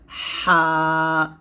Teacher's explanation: দুইটা হরফ আমি এখানে লিখে বোঝাবো আপনাদের এই যে হরফটা হা এটা আপনাকে কন্ঠের মাঝখান থেকে চাপ দিয়ে এবং চিকন করে বলতে হবে হা এরকম এটা উচ্চারণ করার সময় এরকম একটা শব্দ হবে হা